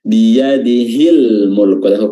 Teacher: huruf lamnya dibaca izhar, dibaca jelas, ya, karena bertemu dengan mim setelahnya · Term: izhar qamariyah